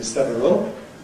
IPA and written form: ˈsevərəl (several)